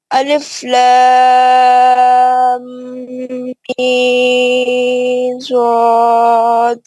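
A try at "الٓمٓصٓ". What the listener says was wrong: آپ غنہ بھی نہیں کر رہے، خلخلہ بھی نہیں کر رہے.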